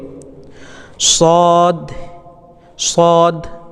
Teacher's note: হয় মোটা সেরকম বাতাস বা বার হবে শিন এভাবে এরপরে সদ সদ এর মাখরাজ হচ্ছে জেহুব্বার আগা সামনের নিচের দুই দাঁতের গোড়া